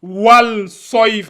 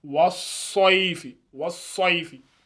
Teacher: On n'ajoute pas un soukoun. Donc, on lit directement, on colle directement le wa et le so.